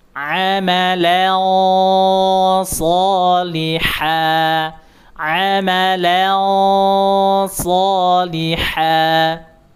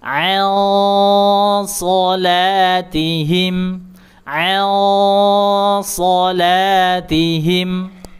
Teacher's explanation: karena huruf so mempunyai sifat idbaq, sifat isti'la, ya tebal, maka dia juga harus dengungnya ada unsur tebalnya. Makanya disebut dengung tebal.